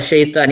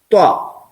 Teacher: ത്വ, ആ correct point കൊടുക്കുന്ന സ്ഥലം കണ്ടോ? ത്വ, നാവിന്റെ അറ്റല്ല, അറ്റത്തിന് നേരെ മുകൾ ഭാഗം. അത് നമ്മൾ മേലെ പല്ലിന്റെ മുരടിന്ന് കുറച്ച് മേലോട്ട് കയറിയിട്ട് ഉച്ചരിക്കണം.